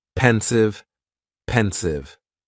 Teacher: just two syllables and the stress is on that first syllable